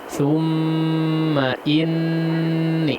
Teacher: Gunnah pada nunnya dipanjangkan sedikit ya